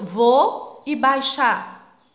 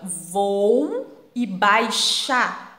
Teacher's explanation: mostram a queda da semivogal na pronúncia dos ditongos decrescentes terminadas em u i